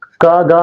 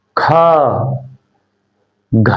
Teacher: खा, घ, है ना, ज्यादा हवा निकली, बोल के देखो, ज्यादा हवा निकली है, का गा में कम हवा निकलेगी और ख घ में ज्यादा हवा निकलेगी। हर वर्ग के दूसरे और चौथे वर्ण में, सॉरी व्यंजन में ज्यादा हवा निकलेगी उसे महाप्राण बोलेंगे, और जिसमें कम हवा निकलेगी पहला, तीसरा और पांचवा हर वर्ग का, उसे अल्प प्राण बोलेंगे।